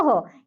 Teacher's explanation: विसर्ग का उच्चारण मुख से होता है और ओ के बाद हो की ध्वनि निकलती है।